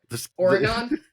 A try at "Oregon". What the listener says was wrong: I think you're leaning a little too hard on the on. I think it's Oregon is more the.